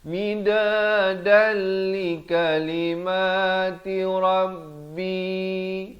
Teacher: Asalnya midadan tapi datang lam terus masuk tanpa dengung. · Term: idgham bila gunnah